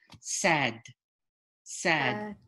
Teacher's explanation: it's kind of in between a d and a t